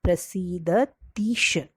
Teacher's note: अगर ह्रस्व ई के सामने दीर्घ ई भी आता है तो भी दोनों मिलकर दीर्घ ई होता है। जैसे प्रसीदतीश, ती की जो वेलांटी है वो दीर्घ होती है।